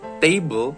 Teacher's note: Take the word table, the first part of the word is emphasized when we say it. Table, the second part of the word sounds shorter.